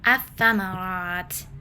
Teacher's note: atsamarat lamnya tidak terdengar atau tidak dibaca · Alasannya adalah setelah alif lam ada huruf syiddah, huruf syamsiyah. Cara bacanya adalah huruf lam dilebur dan langsung masukkan ke huruf setelahnya. Dalam hal ini fa yang bertasydid. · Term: alif lam syamsiyah